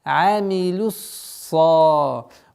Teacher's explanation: Удерживаем сад, потому что со свистом, свойство свист.